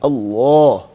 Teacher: اگر زبر ہو جی یا پیش ہو یعنی دو چیزیں زبر یا پیش تو اس وقت ہم لفظ اللہ کے لام کو موٹی آواز میں پڑھیں گے